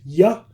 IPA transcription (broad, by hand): j